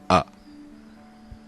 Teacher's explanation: வகையைச் சேர்ந்தது ஒலிக்கும் கால அளவின் அடிப்படையில் இது குற்றெழுத்து அல்லது குறில் எனப்படுகிறது குற்றெழுத்துக்கள் ஒரு மாத்திரை அளவே ஒலிக்கும் தன்மை வாய்ந்தவை இதனால் இந்த எழுத்தும் ஒரு மாத்திரை அளவுடனே ஒலிக்கும்